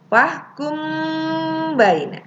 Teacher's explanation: ada mim mati bertemu dengan ba hukumnya adalah Ikhfa Syafawi karena ketika membacanya harus apa disamarkan wah kummm by minimnya ditekan ya bersama-sama dengan babakan2 angkat ya